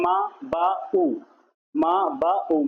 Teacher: तो म ब और उ ये तीनों होठ से हो रहे हैं। तीनों की होठ से आकृति बनी जा रही है। और इसमें जो आ है ना आ ये नहीं हो रहा। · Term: ओष्ठ